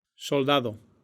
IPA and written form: sol̪ˈd̪a.ð̞o (soldado)